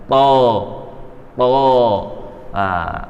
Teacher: Jadi to itu pakai ujung sini, ujung lidah, tetapi diangkat tuh bagian belakang ini sehingga lidah bagian belakang diangkat ke langit-langit sehingga keluarnya itu tebal, karena dia termasuk huruf yang tebal, to, to.